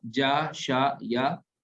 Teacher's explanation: یہ زبان کے بیچ سے ادا ہوتے ہیں